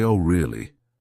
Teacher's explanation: with a flat tone, they might be skeptical or even a bit sarcastic.